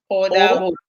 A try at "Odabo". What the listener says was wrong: No. O. Da. Bo. Yeah, that O, you have to give it a little 1 or 2 seconds. Odabo.